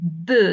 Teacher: when we press the two lips together, we have here stop of the air flow. When we say b, there is a stop. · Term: bilabial